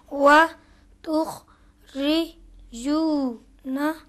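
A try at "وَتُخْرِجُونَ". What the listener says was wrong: अब देखो यहाँ पे तुख री जू न नहीं पढ़ेंगे, क्यों बोले? किसके बाद? जीम के ऊपर पेश है और इस पेश को खींचना होगा, क्यों खींचना होगा?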